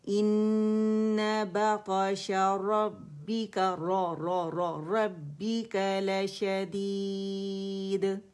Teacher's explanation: اور دال کا قلقلہ باریکی سے کریں گے